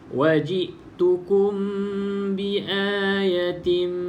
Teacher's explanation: Dengung 2 harakat, tutup mulut, bibir atas bibir bawah. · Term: ikhfa syafawi